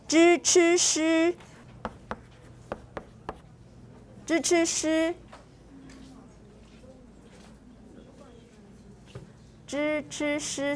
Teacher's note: It's the T with the retroflex, the S with the retroflex.